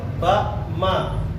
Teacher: makhrajul hurufnya adalah kedua bibir dirapatkan sama seperti ba, karena dia satu makhraj